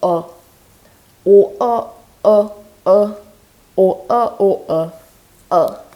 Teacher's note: Except this time, instead of rounding, you unround. So it's the unrounded version of O.